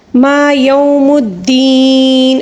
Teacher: وقف کے دوران زیر کو ہم ساکن دے کر پڑھیں گے